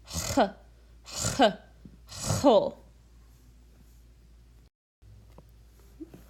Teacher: It's that phlegmy sound at the back of your throat.